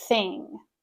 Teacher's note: And thing, make sure that's unvoiced.